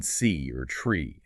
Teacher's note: with the long E, that E sound, you're holding it longer, it's more sustained, and you'll probably feel that your mouth is tensing a little bit more, maybe spreading out a bit wider